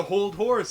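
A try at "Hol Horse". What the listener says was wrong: It's not Hold Horse, it's Hold Horse. There's no D.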